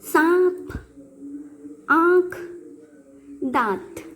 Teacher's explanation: इन शब्दों के उच्चारण में मुख से भी हवा बाहर आती है और नाक से भी हवा बाहर आती है, और वह आपके हथेली को स्पर्श हो रही है। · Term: अनुनासिक